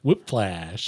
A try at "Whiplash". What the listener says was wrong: I swear I'm hearing an F